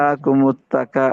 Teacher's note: الہاکم التکا میں کاف باریک ہے, موٹا نہیں, اس کو آپ نے باریک ہی پڑھنا ہے. اچھا, الہاکم التکا, الہاکم التقا نہیں, الہاکم التکاثر.